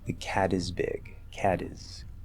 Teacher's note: cat ends with a T, we turn into a flap D